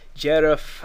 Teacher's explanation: Jerif, again, D with a slender vowel makes it a J.